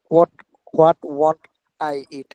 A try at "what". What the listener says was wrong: হুম আচ্ছা একটা কথা, এটা হোয়াট না, এটা হোয়াট, ঠিক আছে? হার উচ্চারণটা এখানে সাইলেন্ট থাকবে, হার উচ্চারণ আসবে না।